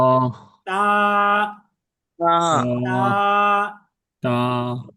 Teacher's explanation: হরফটি জিহ্বার আগা, সামনের যে উপরের দিকের দুই দাঁত আছে, এই দুই দাঁতের গোড়ার সঙ্গে লাগবে।